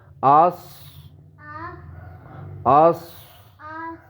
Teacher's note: اس میں آواز ذرا موٹی ہوگی